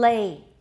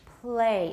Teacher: is typically voiceless and very different from the l in lay lay is clearly voiced play it's devoiced